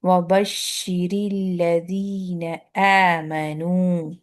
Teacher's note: ایک تو شد ہے، ڈبل شین ادا کرنے کے لیے مخرج پہ تھوڑی دیر رکنا پڑے گا